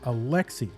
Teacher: pronounced his first name in the Western way with the emphasis on the le